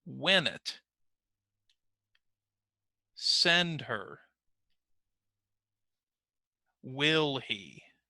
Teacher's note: Now, that's because in the examples on the right, we're going to identify the stressed word, and you will notice that in each case, the first word is going to be the stressed word